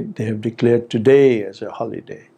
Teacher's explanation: the nucleus falls on today